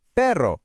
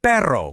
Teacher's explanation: with that double R, and that's the one you really have to trill